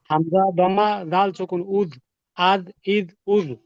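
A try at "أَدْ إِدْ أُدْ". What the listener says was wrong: এত তাড়াহুড়া করা যাবে না, খুব ধীরস্থির ভাবে বলতে হবে।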